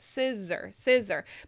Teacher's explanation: si is the stress syllable, and that's the one that needs to be the clearest. So the zer is like kind of I barely move my mouth, as you see.